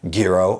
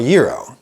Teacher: I can either round it up to a guh, or I can round it down to a yuh.